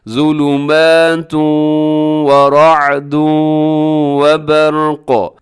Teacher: وبرق، یہاں پر برق جو لفظ ہے یہاں پر را ہے، را موٹی پڑی جائے گی کیونکہ ویسے تو ساکن ہے لیکن اس سے پہلے زبر آ گئی ہے تو یہ را موٹی ہوگی ، اور برق اپنے برق پر اپنے کیا کرنا ہے، وقف